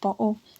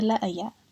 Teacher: it's called a glottal stop and that means in words like um bottle we say bottle so there's a stop there